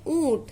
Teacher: जब हम बोल रहे हैं तो ध्वनि नाक और मुंह दोनों से निकल रही है